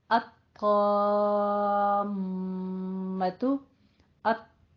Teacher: میم تشدید والا ہے، غنہ کیجئے، غنہ واجبہ بھی ہوگا ساتھ میں